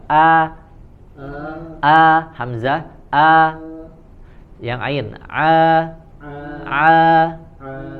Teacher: kalau Hamzah di pangkal tenggorokan